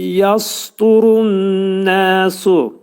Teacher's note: Yasturun ra hərfi qalın oxunur, dəl hərfi incə oxunur. Yasturun nəsu nun hərfi mə'al-gunnə. Yəni burada iki səs qədər uzadılacaq. Burunda sıxılacaq və iki səs qədər uzadılacaq.